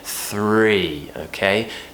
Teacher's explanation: Tongue between the teeth, and as we move to the R sound, the tongue needs to lift up a little bit higher and curl back slightly. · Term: THR consonant clusters